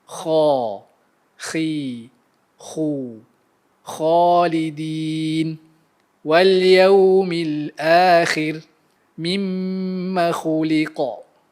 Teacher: Bunyinya dihasilkan dari kawasan tekak yang hampir dengan mulut dan berkongsi makhraj dengan huruf ghain. Cara nak bezakan kha dengan ghain, kha bunyi dia kering dan ghain bunyi dia basah. · Cara nak bezakan kha dengan ghain, kha bunyi dia kering dan ghain bunyi dia basah. Oleh kerana ia adalah huruf yang tebal, ia mesti disebut dengan mengangkat belakang lidah. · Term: Huruf kha, huruf kha